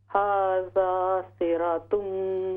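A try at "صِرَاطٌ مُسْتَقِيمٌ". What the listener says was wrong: रा अलिफ ज़बर रा, हाज़ा सिरातुम मुस्तक़ीम। सिरातुम लंबा कीजिए।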